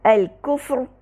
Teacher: را کو مفخم پڑھا کیونکہ را ساکن کر وقف کی صورت میں ساکن کیا، اس سے پہلے والے حرف پر ساکن تھا یعنی کہ فا، اور اس سے پہلے والا حرف کاف ضمہ کے ساتھ تھا۔